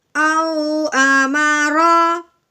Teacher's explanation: लीन का मतलब है लफ्ज़ को नरमी से पढ़ना है, खींच के हरगिज़ नहीं पढ़ना, ठीक है। पढ़ना नरमी से, झटका भी नहीं लगाना।